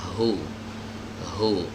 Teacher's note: Hu keluarnya dari pita suara, dari tenggorokan bagian bawah